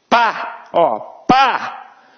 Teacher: o P antes, ele até tem uma interrupção, mas e o A? Nenhuma.